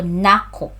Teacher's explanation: Pronunciation, the stress is on the second syllable.